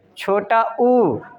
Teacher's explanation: छोटा ऊ कहने के बाद आपका जो ओठ है वृत्तकार बन जाता है, इसलिए इसको हम क्या कहते हैं, वृत्ताकार।